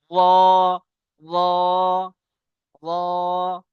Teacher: জীবের আগার উল্টো পিঠ এবং তার বরাবর উপরের তালু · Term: রর মাখরাজ